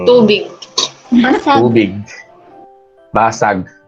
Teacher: Parang yung hulihang, yung some part of your tongue, yung ilang bahagi ng iyong dila ay dumadampi dun sa hulihang bahagi ng ngalangala mo.